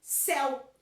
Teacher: Quando eu falo céu, eu tenho a vogal forte, que é o som do E, e eu tenho uma fraca, metade do som dessa vogal, que é um som vocálico, metade dele, que é o U, céu. Então, o E é forte e o U, ele é um pouco mais fraco, ele é metade desse som, ele é semivogal.